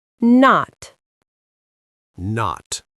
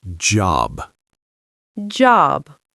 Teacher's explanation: notice how the sound stops quickly, not long, just short. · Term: short sound